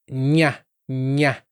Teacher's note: E o NH, ele é um som nasal, como se o N e o Y se fundissem.